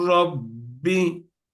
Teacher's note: rayya dönüştürüyoruz ra'nın içine atıyoruz artık lam yok ra var Dolayısıyla şeddeli için bir elif miktarı da tutacağız ki iki harf olduğu belli olsun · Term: şeddeli ra